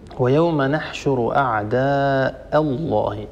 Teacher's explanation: ان ننتقل الى اللام من لفظ الجلاله وهي لام المفخمه فهنا لا نترك الهمزه المستفله المرققه تتاثر باللام المغلظه المفخمه لا يصح ان نقول اعداء الله اعداء الله اه هذه همزه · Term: الهمزة المستفلة المرققة